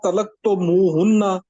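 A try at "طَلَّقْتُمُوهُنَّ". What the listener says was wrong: نہیں لام کے اوپر شد پڑھ رہے ہیں، طلقتموہن،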